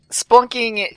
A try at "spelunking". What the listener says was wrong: I would just like to clarify, it's pronounced spelunking, not splunking.